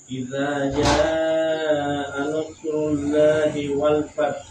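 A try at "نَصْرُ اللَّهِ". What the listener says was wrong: Lam tebal, jangan nasrullah. Lo, bukan nasrullah.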